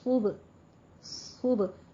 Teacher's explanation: صبحن، صبح کے وقت، صاد کو پر پڑھنا ہے، با پر قلقلہ کرنا ہے. صبح، صبح، صاد میں تھوڑی سی سیٹی کی آواز بھی آئے گی.